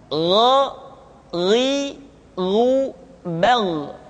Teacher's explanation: Diucapkan seperti kita mengucapkan huruf Kha, yaitu diucapkan dari pangkal tenggorokan kita. Yang membedakannya adalah Kha mengalir nafas dan Gha tidak mengalir nafas. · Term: huruf Gha